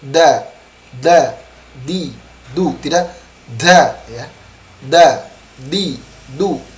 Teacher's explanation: huruf Dal tidak berdesis jadi jernih